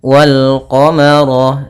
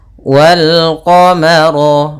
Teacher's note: Pada bacaan wal qamara, di sini ada alif lam qamariyah, yaitu ada alif dan lam tertulis dan dibaca bertemu dengan huruf qamariyah, salah satunya ada huruf qaf, maka lamnya dibaca dengan jelas. Wal qamara, ro-nya tebal karena ro berharakat fathah.